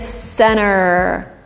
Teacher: So T is substituted with this longer N, and you get center. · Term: elision